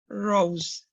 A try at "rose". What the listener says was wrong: Bring your lips closer.